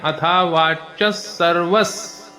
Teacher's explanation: अथावाचस अथावाचस पुढचा शब्द स त्यानंतर व वर रफार सर्व त्यानंतर पुन्हा विसर्ग आहे पण विसर्गानंतर अर्धस आहे त्यामुळे अथावाच सर्वस असा उच्चार होतो